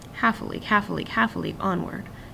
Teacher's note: the stress followed by two unstressed it almost sounds like a gallop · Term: dactylic meter